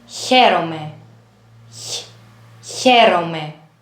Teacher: The first one is when the middle of the tongue touches the palate and you have the sound H